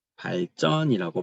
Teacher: 한자어 리을에서는 뒤에 있는 애들이 된소리가 일어난다.